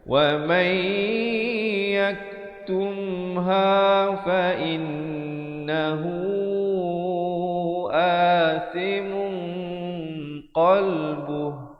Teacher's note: Wa may di sini hukum idgham bi gunnah, nun mati bertemu ya. Asalnya waman, tapi bila datang ya jadi masuk beserta dengung, idgham bi gunnah.